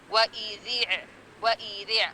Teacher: صرف اندر والے اوپر والے دانتوں کے ساتھ ٹچ ہوئے گی، ذی اندر کی طرف، باہر کی طرف نہیں آئے گی زبان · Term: ذال